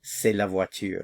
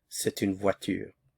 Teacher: since the indefinite article here begins with the vowel, there's liaison, so you hear the T.